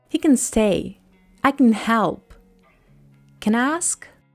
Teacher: When can occurs at the beginning or in the middle of a sentence, it's not emphasized. Pronounce the vowel with a schwa sound. Stress the verb that follows. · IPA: /ə/